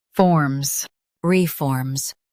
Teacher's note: Emphasize form and keep re light.